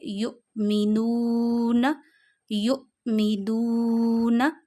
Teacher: پیچھے اور اس پہ پیش ہو تو واو مدہ ہوتا ہے، واو مدہ کو 1 فنگر جتنا کھینچتے ہیں ، یہاں 1 فنگر جتنا کھینچیے، یؤمنون، یؤمنون۔ تو یہاں پہ